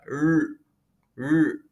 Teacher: R di sini tidak digetarkan seperti yang kita lakukan dalam bahasa Indonesia. Namun hanya ditekuk saja.